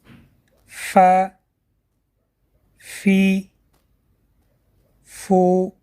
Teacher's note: Фа произносят, дотрагиваясь верхними резцами середины нижних губ. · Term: буква Фа